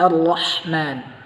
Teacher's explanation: ra yang tebal selain ujung lisan kita berada pada langit-langit, kemudian tengah lisan kita, tengah lidah kita itu dia terangkat sehingga dia tertebal. Tetapi yang tipis, tengah lisan itu tidak terangkat sehingga dia suara tipis, tidak seperti terangkatnya huruf ra yang tebal.